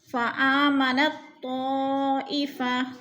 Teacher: فآمنت طائفہ، نت، نون کو طا کے ساتھ جوڑ کر ادغام کریں گے، درمیان والا تا ساکن نہیں پڑھا جائے گا۔ طا میں مد متصل ہو رہی ہے، 4 الفی مد ہے، ہم نے اس کو 4 حرکات کے برابر لمبا کر کے پڑھنا ہے۔